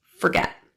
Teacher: Forget has stress on the second syllable, get. So the vowel in the first syllable is reduced to a schwa, sounding like fur instead of for